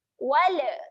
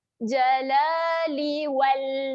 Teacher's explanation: lam ini naikkan sahaja hujung lidah ke gusi atas. Hujung lidah gusi atas dan kita kemaskan supaya tidak terhasil bunyi lantunan. Wal, jangan bunyi wala. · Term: lam bertanda sukun